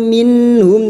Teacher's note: nun sukun dibaca jelas tanpa mendengung minhum mim sukun bertemu Ain Idhar syafawi mim sukun dibaca jelas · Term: izhar halq